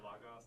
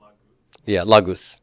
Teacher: this short omicron is going to lengthen. This is called compensatory lengthening, and it becomes an omicron upsilon diphthong, and diphthongs are long vowel sounds, aren't they?